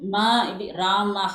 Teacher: the lips join together as well as the nasal sound also comes while pronouncing ma